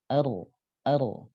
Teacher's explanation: Cuma kalau ro tentunya tidak akan bisa sepanjang nun sama lam. Ya, karena ro dia terbatasi oleh getaran ujung lidah. Sementara ro itu getar ujung lidahnya secara teori para ulama menyebutkan maksimal 4 kali bergetar ujung lidah itu. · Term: huruf ro